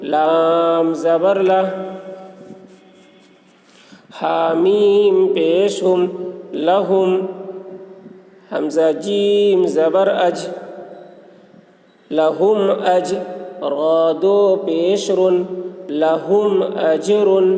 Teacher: میم ساکن کے بعد با اور میم کے علاوہ حرف آ رہا ہے، اس لیے میم کو ظاہر کر کے پڑھیں گے، اس کو اظہار شفوی کہتے ہیں۔